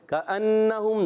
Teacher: کأنہم، کاف زبان کی جڑ تعلق کے سخت حصے سے ادا ہوتا ہے۔ کأنہم، نون مشدد، ایک الف کا غنہ ادا کریں گے